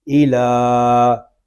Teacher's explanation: نون زبر نا، ان، حمزہ زیر ای، ان ای، لام کھڑا زبر لا، ایلا، یہاں یہ یا جو ہے یہ زائد ہے، اس یا کو ہم نہیں پڑھیں گے۔ ایلا، لام کو ہم ایک الف تک کھینچ کر پڑھیں گے کیونکہ یہاں پہ کھڑا زبر آ رہا ہے، اور کھڑا زبر الف مدہ کے قائم مقام ہے۔